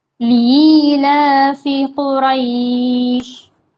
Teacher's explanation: یا ساکن سے پہلے زبر آئے گا تو لین ہوگا، تو لین کو جلدی پڑھنا ہے